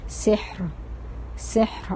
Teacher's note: اب را سکون میں، حا سکون میں، اور اس سے پیچھے سین کے نیچے زیر ہے، تو اس وجہ سے را باریک پڑھی جا رہی ہے